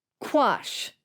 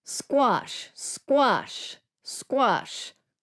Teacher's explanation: do you feel in the second word quash that you blow that air out but with squash you don't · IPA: /kw/